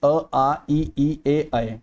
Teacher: अगर गोलाकार नहीं होते, ठीक है, फ्लैट से हो जाते हैं, ठीक है, तो उन्हें कहते हैं अव्रतमुखी या अर्धव्रतमुखी। ठीक है, ओष्ठ गोलाकार इसमें नहीं होते।